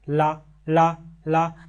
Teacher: ऐसे व्यंजन जिनके उच्चारण में जिह्वा के बगल भाग पर बल लगता है, उसे ही हम क्या कहते हैं, पार्श्विक व्यंजन।